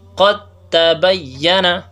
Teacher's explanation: دال کو تا میں ہم نے ادغام کر دیا لیکن دا کا کوئی صفت بھی یہاں باقی نہیں ہے بلکہ دال مکمل طور پر تا سے بدل گئی ہے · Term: ادغام تام